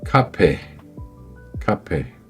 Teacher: se prononce avec un souffle d'air fort et prononcé. Posez la main devant la bouche. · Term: le cas aspiré